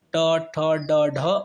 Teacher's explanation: जीभ मुड़ करके ऊपर तालु में टच करेगी तो टा वर्ग का उच्चारण होगा, नहीं तो नहीं हो पाएगा। · जीभ रोटेट हो रही है फिर जाकर तालु में टच कर रही है। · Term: मूर्धा